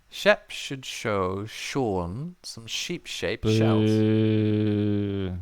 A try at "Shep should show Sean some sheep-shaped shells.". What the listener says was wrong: That was way too slow, right? Let's speed it up a little bit.